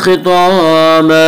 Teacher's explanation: तवा को भी पुर पढ़ेंगे, तवा भी हुरूफ मुस्तालिया में से है। खिताबा, अलिफ मद्दा, अलिफ में शाह मद्दा होता है, अलिफ के ऊपर ज़बर होता है।